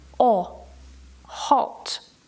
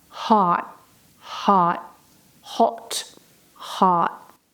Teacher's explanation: O, in British English is very short and very round. O, hot. While in American English, it's a lot longer and a little bit more open.